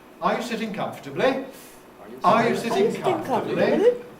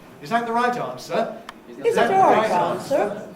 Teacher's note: that's a rise in the case of yes-no questions, but a fall for everything else